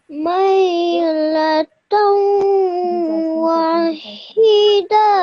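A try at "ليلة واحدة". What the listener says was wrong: Just one thing you made a mistake one was over here, that don't stretch the da out for too long. This is just a dal with a fatha, so da.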